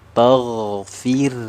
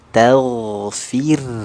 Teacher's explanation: Nah, jadi huruf ta itu kan tipis istifal. Jadi vokalnya kan a, sempurnakan wasta. Ta ketemu ghain baru alirannya ditebalkan. Taghfir. Nah, begitu ya.